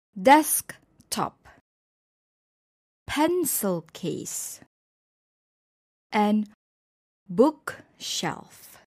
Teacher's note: for compound nouns the stress is on the first part of the word